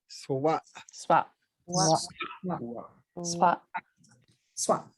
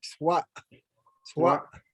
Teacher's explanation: you want to make that last glottal sound like very abrupt, like swat, swat.